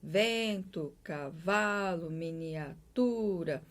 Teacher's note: o acento tônico recai na penúltima